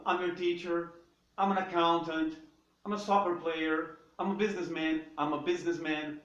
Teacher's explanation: O I'm ele é um pouco mais prolongado, você tem a vogal I aqui no meio e dá mais trabalho.